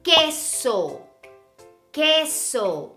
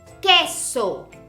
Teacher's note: Do you see how we don't make the sound of the U? Because it's the letter Q.